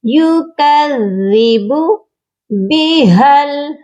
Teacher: ہا کو لام کے ساتھ ملائیں گے، درمیان میں دو الف ہیں یہ نہیں پڑھے جائیں گے